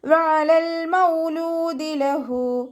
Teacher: ഐനിൻ്റെ സൗണ്ടിനെ തൊണ്ടയുടെ മധ്യഭാഗത്ത് തന്നെ കൊണ്ടുവരിക